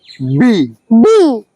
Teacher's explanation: দুটি ঠোট বন্ধ করে শক্ত করে উচ্চারণ করব